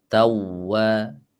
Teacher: Kasih nabar sedikit di huruf wawu. Nabar itu tekanan sedikit ya.